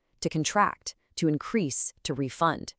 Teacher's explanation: when the stress shifts to the second syllable, that first syllable loses its power and is almost always forced to shrink right back down into a schwa